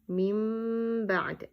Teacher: When we're changing noon into meme, the reading is going to be mim ba'd, and you're going to stretch for 2 seconds on meme. It means you're completely going to ignore noon and reading meme, and you stretch on meme, holding it for 2 seconds. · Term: iqlab